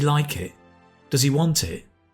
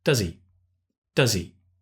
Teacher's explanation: the h usually disappears in the question so instead of does he it's does he does he right